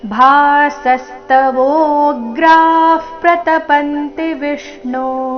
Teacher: ಭಾಸ್ತ ಭಾ ಮಹಾಪ್ರಾಣ ದೀರ್ಘ ಮುಂದಿನ ಸ ಮೇಲೆ ಆಘಾತ